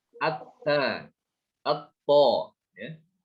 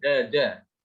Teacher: Dal, to sama ta itu keluar dari tempat yang sama, yaitu di ujung lidah